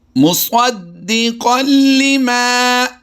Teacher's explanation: इसी तरह तनवीन के बाद अगर हरफ लाम और रा हुरूफ़ यरमलून से आ जाते हैं तो इनमें भी हम क्या करते हैं, बग़ैर गुन्ना के इदगाम करते हैं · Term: इदगाम बिला गुन्ना